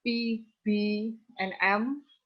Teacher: Bilabial is both the upper and lower lips are active articulators.